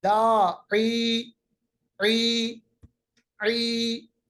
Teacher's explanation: तीसरा हर्फ मद्दा हमारे पास है या, और या कब हर्फ मद्दा है, जब या साकिन माकबल जेर हो, जैसा कि यहां आप देख रहे हैं दाई ई ई, या को हमने लंबा किया क्योंकि या साकिन माकबल जेर है, या साकिन माकबल जेर, तो या भी हमारे पास हर्फ मद्दा है।